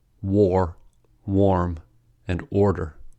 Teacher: Aw is a medium-low back vowel. It is also a round vowel, meaning that the lips are rounded when saying aw.